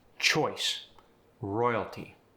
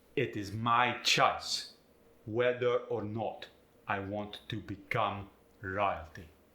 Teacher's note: The oi sound gets the I sound with an upward inflection.